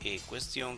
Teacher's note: cuestión, que tiene el acento en tión, es una palabra aguda